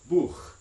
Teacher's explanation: the German word for book ends in a voiceless velar fricative